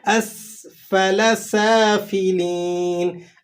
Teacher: اسفل سافلین، اس سین ہے، سیٹی کے ساتھ ادا کریں گے۔ فا کو آپ نے ہونٹوں سے ادا کرنا ہے، ٹھیک ہے، اور آگے پھر سافلین میں سین ہے اور اس کے بعد الف لگا ہوا ہے، تو آپ نے اسے ایک الف تک کھینچ بھی لینا ہے۔